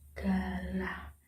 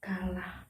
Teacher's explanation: Yang selanjutnya ada konsonan G dan K, adalah konsonan hambat velar. Artinya konsonan ini dihasilkan dengan menempelkan belakang lidah pada langit-langit. Konsonan G akan dihasilkan apabila arus udara dari paru-paru menggetarkan pita suara. · Artinya konsonan ini dihasilkan dengan menempelkan belakang lidah pada langit-langit. Konsonan G akan dihasilkan apabila arus udara dari paru-paru menggetarkan pita suara. Sebaliknya, konsonan K akan dihasilkan apabila arus udara itu tidak menggetarkan pita suara.